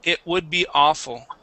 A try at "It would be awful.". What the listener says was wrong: instead of saying would and putting in the L there, the L in that word is silent.